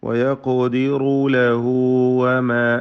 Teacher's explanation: ചേർത്തോതുകയാണെങ്കിൽ മദ്ദുസ്സില സൂറ നൽകി വയഖദിറു ലഹു വമ എന്ന് ഓതേണ്ടതാണ്.